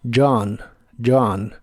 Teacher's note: Y usaremos la palabra John, que es la versión del nombre Juan en inglés, pero lo usaremos solamente como John, para que sea más fácil. La J se pronuncia con el sonido Y, que es muy común para esta letra en inglés, y después usa un sonido de A profunda.